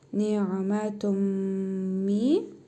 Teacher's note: İdğam-ı mə'al-qunnə qaydasına görə tənvindəki nun hərfini burnumuzda tələffüz edərək 1 əlif miqdarı uzadırıq. Mim hərfini isə şəddə veririk.